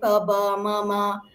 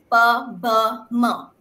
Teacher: sounds they start babbling sounds like PB MMA basically bilabial sounds simple sounds that are articulated through the lips right the fusion of your upper and lower lip